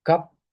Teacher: open mid unrounded vowel